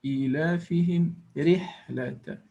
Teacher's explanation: the رحلة is soft ra or empty mouth ra.